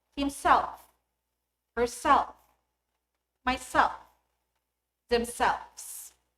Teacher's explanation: stress falls on the last syllable.